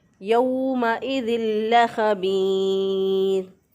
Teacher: खा जो है ये अदना हरक से अदा होता है, यानी गले का वो हिस्सा जो कि मुंह की तरफ होता है, वहाँ से खा अदा होगा · जब नून साकिन या नून तनवीन के बाद जब लाम या रा आ जाए तो वहाँ पर हम इदगाम बिला गुन्ना करते हैं, यानी इसका मतलब ये है कि हम गुन्ना नहीं करेंगे, सिर्फ इदगाम करेंगे। तो यहाँ पर नाक में नून की आवाज़ नहीं जानी चाहिए, बल्कि लाम के साथ ही डायरेक्ट इसको मिला देंगे